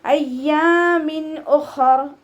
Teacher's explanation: തെൻവീനിന് ശേഷം ഇദ്ഹാറിൻ്റെ ലെറ്റർ ആയിട്ടുള്ള ഹംസയാണ് വന്നിട്ടുള്ളത്. തെൻവീനിലുള്ള നൂനിൻ്റെ സൗണ്ടിനെ വ്യക്തമായിട്ട് കേൾപ്പിക്കുക